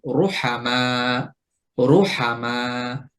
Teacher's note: র এর উপরে যখন পেশ হবে তখনও আমরা মোটা করে উচ্চারণ করব।